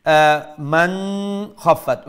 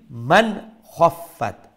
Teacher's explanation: So it is the throat letter. Now we'll pronounce this nun sakin with clarity, which is known as izhar.